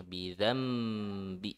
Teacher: Nun sukun bertemu ba itu hukum iklab. Jadi nun sukunnya diubah menjadi mim ya, bidzambi. Jadi langsung saja mim, bidzambi ya.